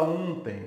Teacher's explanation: o som é de I. Então, eu tenho aqui um ditongo decrescente. É um E e um I que você escuta.